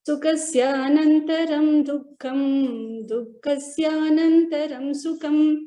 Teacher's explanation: In the first line, when you are reciting dukkham and sukham, the Mahaprana was not told accurately